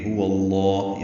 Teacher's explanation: ہاں قصہ حلق سے ادا کریں گے، واو ہونٹوں کی نا تمام گلائی سے ادا کر کے لام اسم جلالہ سے ملا دیں گے. لام اسم جلالہ واو کی زبر کی وجہ سے پر پڑیں گے، 2 حرکات لمبا کریں گے.